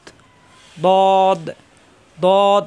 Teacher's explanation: জিহ্বার গোড়ার কিনারা উপরের মাড়ি দাঁতের গোড়ায় লাগিয়ে দদ শব্দের শুরু থাকবে এরকম দত শব্দের মাঝখানে থাকবে এরকম দত